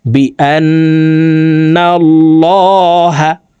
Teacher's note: আল্লাহ শব্দের আগের হরফে জবর আছে এই কারণে এই লামকে ল অর্থাৎ মোটা করে পড়তে হবে